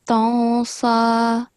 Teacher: noon followed by a sin, you have to perform ikhfa. So you have to make subtle sound, so not tansa, tansa.